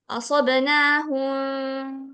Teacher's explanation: Jadi samar samar gitu. Mimnya tuh enggak dibaca gitu. Oke, itu kebalikannya dari izhar. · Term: Ikhfa samar